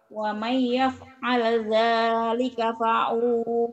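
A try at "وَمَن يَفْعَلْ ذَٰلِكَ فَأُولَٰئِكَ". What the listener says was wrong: Faula, u-nya pendek. Fa'ula. Kalau wau-nya tidak ada sukunnya atau warnanya kuning, pendek.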